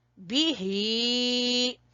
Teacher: इसको हमने इसके हिज्जे किस तरह करने हैं, स्पेलिंग किस तरह करने हैं, वो इस तरह, बा जेर बी, बा को छोटा पढ़ेंगे और ही को खींचेंगे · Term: खड़ी जेर